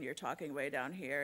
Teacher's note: vocal fry is like when you're talking away down here and you hear that kind of like crackle